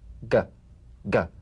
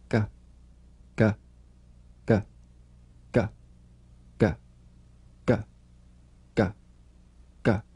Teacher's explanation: You'll feel a crisp tap and a voiced pulsation of the back of the tongue. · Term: voiced tongue back plosive